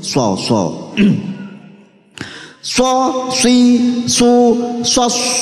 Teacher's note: ujung lidah menghadap dan mendekat di antara gigi seri atas dan bawah, menjadi makhrajnya huruf shad